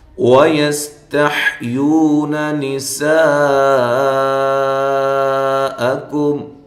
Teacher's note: کاف باریک ہے، میم ساکنہ کا اظہار ہے، وَيَسْتَحْيُونَ نِسَاءَكُمْ، یس سین کو ہلانا نہیں ہے، باریک سیٹی کے ساتھ ، تا کو باریک، حا کو واضح، تح، یو وا مدہ